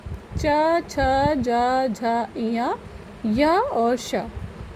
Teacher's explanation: ये हमारे तालु से उच्चारित होने वाले वर्ण या अक्षर कहलाते हैं